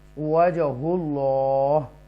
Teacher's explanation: ایکو sound کے ساتھ اس جیم کو پڑھیں گے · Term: حروف قلقلہ